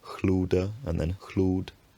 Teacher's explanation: The unstressed vowel reduces and disappears